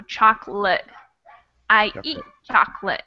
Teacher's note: this is one of those words that the second O gets cut out entirely